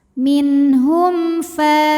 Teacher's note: sukun dibaca n jelas minhum Hum ada hukum izhar syafawi karena mim sukun menghadapi huruf selain mim dan ba yaitu huruf Fa maka mim sukun dibaca jelas